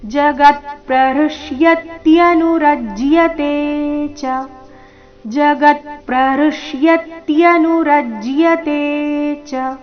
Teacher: ಈ ಚರಣದಲ್ಲಿ ರಜ್ಜಿಯತೆ ನಲ್ಲಿನ ತೆ ಮಾತ್ರ ದೀರ್ಘ